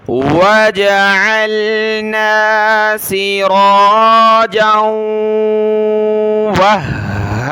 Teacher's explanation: ہا کو بھی ہم نے سخت کرنا ہے تشدید کی وجہ سے، وَجَعَلْنَا سِرَاجًا وَهَّاجًا، واو کو بھی سخت کریں گے، وَهَّاجًا۔